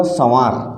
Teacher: आप पाएंगे कि वायु का उच्चारण हमारी नाक से भी हो रहा है, नाक से भी वायु निकल रही है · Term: अनुनासिक